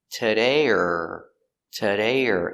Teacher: or is pronounced er because it's not stressed